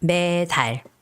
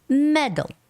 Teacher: But in English, the stress goes on E, and there's no stress for A.